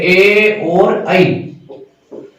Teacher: कंठ तालु वो हो गए ए और आई, ए और ऐ का जो उच्चारण स्थान है वो हो गया कंठ और तालु।